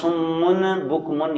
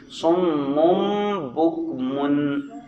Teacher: میم پر ٹھہرنا ہے کیونکہ شد ہے، اور پھر آگے غنہ بھی ہے کیونکہ میم کے بعد با آ رہا ہے۔ صم بکم، جی